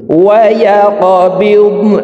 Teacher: কফ কলকলার হরফ উপরের দিকে ধাবিত করে ধাক্কা দিয়ে উচ্চারণ করব।